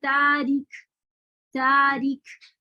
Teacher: पहले आवाज टकराई और बंद हो गई और फिर उसमें हम शामिल हुआ · अब आप देखें काफ और ता में क्या होता है कि इसमें पहले शिद्दा, ये मैं कल बता चुकी हूँ, पहले शिद्दा यानी आवाज रुक जाती है, फिर उसके बाद इसमें हम्स शामिल होता है